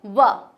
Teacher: जो व वर्ण है वह दंतोष्ठ से उच्चारित किया जाता है